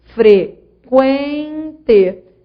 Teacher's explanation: Você foi da semivogal U para a vogal E. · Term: Ditongo crescente